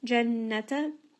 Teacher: nun with shadda is going to have ghunna, make sure you bring it up into the nose.